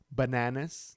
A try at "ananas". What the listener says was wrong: Take out the B.